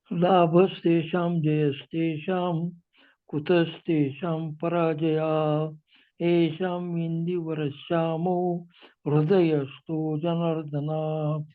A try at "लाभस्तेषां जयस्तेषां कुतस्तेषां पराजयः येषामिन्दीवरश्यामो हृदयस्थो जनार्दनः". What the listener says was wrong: ये थोड़ा विसर्ग पराजयः जनार्दनः थोड़ा हा का उच्चारण करेंगे ना और मजा आएगा पढ़ने में। जनार्दनः पराजयः।